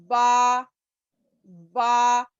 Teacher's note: दोनों होठ मिल रहे और गीले हिस्से मिल रहे हैं, खुश्क हिस्से नहीं मिल रहे।